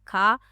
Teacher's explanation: और चौथा है ख कंठ महाप्राण अघोष है।